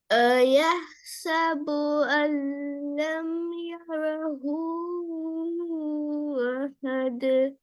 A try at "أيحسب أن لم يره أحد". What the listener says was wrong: இப்ப ஹூவை நீட்டிங்க தானே. ஹூவை நீட்டினா அடுத்தது ஏட சவுண்ட் ஃபோக்கஸ் பண்ணி வரணுமா? ஏட சவுண்ட் வரணும். أيحسب أن لم يره أحد.